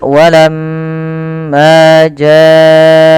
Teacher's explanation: usahakan kita menahan daripada bunyi suara mim karena di sini dilihat mimnya berharakat tasdid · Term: bacaan gunah